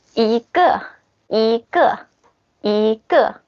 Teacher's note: So normally it's the first tone. And if there's something with the 4th tone after 1, you pronounce 1 like the 2nd tone. For example, ge.